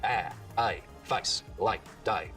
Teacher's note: So the diphthong in face starts real low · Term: face lowering